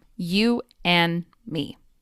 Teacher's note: The final D sound at the end of and disappears to become you and me.